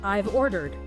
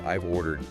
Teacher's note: The vowel sound in have gets reduced to a very quick weak sound. Sometimes called a schwah or it might even disappear entirely.